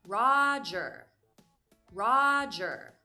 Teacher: notice the different pronunciation at the end of the name roger standard american english pronunciation pronounces the er sound at the end after the vowel sound